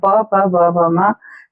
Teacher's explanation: ओष्ठ्य वर्ण कहलाते हैं, जहां पर हमारे होठों को टच करने हो जाते हैं, प, प, ब, भ, म, सारे के सारे वर्ण हम होठों को छू करके बोल पाते हैं, दोनों होठ हमारे सट जाते हैं तब बोल पाते हैं।